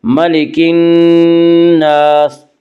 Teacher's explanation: نون یا حروف شمسی میں سے ہے، نون سے پہلے الف اور لام ہے، اس لیے الف اور لام کو نہ پڑھا جائے گا بلکہ بعد والے حرف سے ملا کر پڑھیں گے۔ ملک الناس، نون مشدد غنہ ہوگا، غنہ کی مقدار 1 الف ہے۔ ملک الناس، الف مدہ، الف ہمیشہ مدہ ہوتا ہے، الف سے پہلے ہمیشہ زبر ہوتا ہے، الف مدہ کو 1 الف کے برابر کھینچ کر پڑھیں گے۔